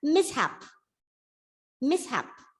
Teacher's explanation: this is a noun with two syllables stress on the first syllable